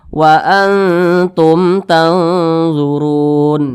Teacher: izhar syafawi itu dibaca tidak berdengung jadi tumnya jangan dipanjangkan